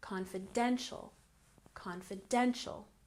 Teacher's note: confidential with emphasis on the third syllable